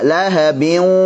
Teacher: waw atau ya-nya aktif dan gunnahnya yang keluar dari al-khayshum juga aktif. Dua-duanya harus kita berikan.